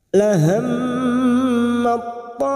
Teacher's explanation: Bertemunya huruf tak sukun dan huruf po, memasukkan 2 huruf yang sejenis makhrajnya disebut dengan bacaan idgham mutajanisain, dengan menghilangkan sifat hamas pada huruf ta ini. Kita hilangkan sifat hamas dari huruf ta ini karena kita langsung masuk pada huruf po, maka kita baca tebal. Lahammat ta.